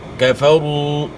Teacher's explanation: واو ساکن سے پہلے پیش ہے، پیش کو آپ نے کھینچنا ہے، ایک الف کے مقدار کے برابر مت کرنا ہے.